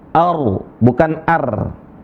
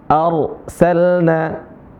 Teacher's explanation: sebelumnya adalah berharakat fathah yaitu hamzah maka dibaca tebal rnya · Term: ro yang tafhim